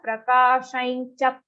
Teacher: And on cha, there is a very clear aghat.